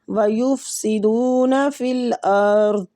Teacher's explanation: صاد مستعلیہ حروف ہے، پر پڑھنا ہے